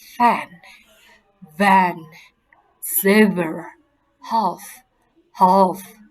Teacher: The lower lips in contact with the upper teeth. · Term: labiodental fricatives